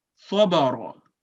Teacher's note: यहाँ पे सौद भी और रा भी दोनों थिक यानी मोटी आवाज में पढ़े गए